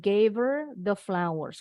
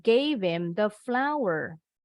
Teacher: asli Bahasa Inggris kalau untuk pronoun him atau di belakang ya h nya ini dibuang supaya bisa disambungin dengan bunyi huruf sebelumnya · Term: h nya dibuang